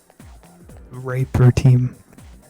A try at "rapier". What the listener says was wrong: No. They don't. It's rapier. There's an I in it.